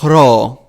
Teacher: It is the heavy breath before the R sound. And this is why the ro is aspirated always at the beginning of words.